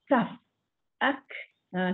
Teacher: Hamas ni maknanya nafas terlepas. Bila kita sebut kaf tu, nafas kita terkeluar.